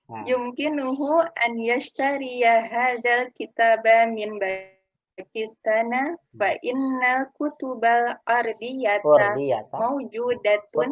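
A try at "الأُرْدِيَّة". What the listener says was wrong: Kutubal urdiyata, bukan ardiyata, urdiyah.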